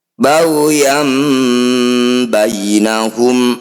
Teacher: ba'di Ma jaahumul ilmuainahum Fath tanwin bertemu ba disebut bacaan iqlab cara bacanya bunyi fathah tanwin kita dengungkan dua harakat ketika dengung posisi bibir rapat